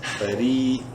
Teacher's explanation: را کو باریک پڑھیں گے زیر کی وجہ سے اور ایک الف برابر لمبا بھی کریں گے یا مدہ کی وجہ سے را کو.